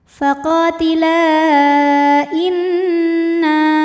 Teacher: Mad tabi'inya adalah alif didahului fathah pada kata faqatila, sedangkan hamzahnya i pada kata inna, maka lam dipanjangkan boleh 4 boleh 5 harokat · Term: mad jaiz munfasil